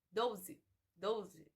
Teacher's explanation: A palavra 12 em português não possui o U, mas nós pronunciamos como se tivesse